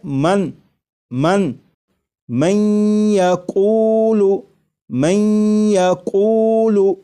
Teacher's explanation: یہاں پر دیکھیے گا یہ نون ساکن ہے، نون ساکن کے بعد جب یا آ جائے تو نون ساکن کو یا میں ادغام کر کے پڑھیں گے، ملا کر پڑھیں گے، اور نون ساکن کو یا میں ادغام اس طرح کریں گے کہ غنہ بھی ہو